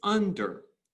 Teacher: under isn't iambic because it's strong weak